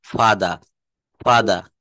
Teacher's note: শব্দের শেষে আর থাকলে আর এর উচ্চারণ করা লাগে না